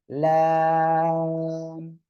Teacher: আর এই লাম অক্ষরে চার আলিফ টান